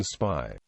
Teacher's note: Initial voiceless stops, like the P in pi, are aspirated with a palpable puff of air upon release, whereas a stop after an S, as in spy, is tenuous.